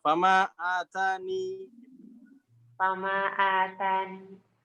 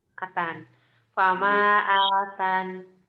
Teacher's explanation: Ya-nya dibuang, nunnya otomatis sukun saja. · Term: membuang